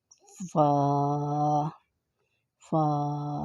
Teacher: فا کہاں سے ادا ہونا ہے؟ ثنایا الغا کے کنارے اوپر نچلے ہونٹ کے اندرونی حصے کے ملنے سے ادا ہوتا ہے